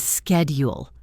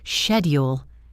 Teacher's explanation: In American English, it is schedule with a k sound. In British English, it is often schedule with a shh sound.